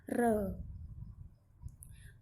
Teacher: आगे आता है प्रंकपित र। जब इसको बोलेंगे तो जीभ हमारे तालु को छूकर एक रगड़ पैदा करेगी, भाव कंपन पैदा करेगी, तब इसका उच्चारण होगा र।